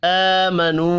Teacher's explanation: हमज़ा पर खड़ी ज़बर है और ये वाव मद्दा है, एक अलिफ के बराबर खींच कर पढ़ेंगे, खड़ी ज़बर को भी और वाव मद्दा को भी।